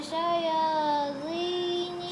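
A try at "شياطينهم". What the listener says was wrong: T, I said. To. But you keep on saying D.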